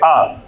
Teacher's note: यानी जब उच्चारण करेंगे तो हमारी जो जीवा होगी वो मुख विवर के बीच में आएगी और जो पूरा हमारा मुख द्वार होगा वो पूरी तरह से फैल जाएगा, खुल जाएगा।